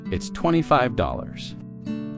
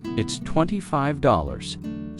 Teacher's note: Stress the number slightly so it's clear to the listener.